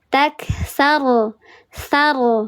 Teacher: Dibacanya tebal. Diangkat pangkal lidahnya, dikeraskan. Dia tafkhim nisbi, namanya dinisbatkan ke huruf ghin. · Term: ro tafkhim